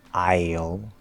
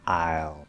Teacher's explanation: you can cut the diphthong on I